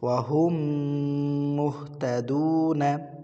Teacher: মিম সাকিনের পরে মিম আসিলে ওই মিম সাকিনকে তাসদিদ দিয়া গুন্না সহ মিলাইয়া পড়িতে হয়। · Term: মিম সাকিনের ইদগম